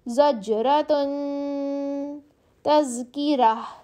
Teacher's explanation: round تا کو ہم نے ہا میں بدل دیا